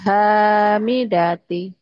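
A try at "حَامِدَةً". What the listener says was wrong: Hamidati ini hamidata. Ah han-nya panjang ya.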